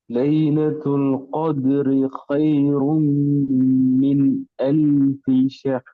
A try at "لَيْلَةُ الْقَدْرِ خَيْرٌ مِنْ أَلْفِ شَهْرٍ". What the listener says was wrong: ஷஹ் ஷஹ் பெரிய ஹாட உச்சரிப்பு கொண்டு இதுல ஹா மாறுது. ஹைரும் அல்ல, ஹொய்ரும் ஹா. லைலத்துல் கத்ரி ஹொய்ரும் ஹொய்ரும் ஹா. ஷஹர் என்று கலக்கக்கூடாது. ஷஹ் ஷஹர்.